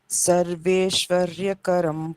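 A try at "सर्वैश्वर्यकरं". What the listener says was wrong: Sarvaishwarya, not Sarveshwarya. Sarvaishwarya Karam Punyam.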